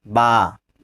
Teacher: میم دونوں ہونٹوں کی خشکی والے حصے سے میم نکالیں گے اور دونوں ہونٹوں کی تری والے حصے سے بتاؤ تری والے حصے سے با. با ہاں، با کا مخرج دونوں ہونٹوں کی تری والا حصہ